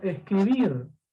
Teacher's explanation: Llevan la mayor fuerza de voz en la última sílaba. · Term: agudas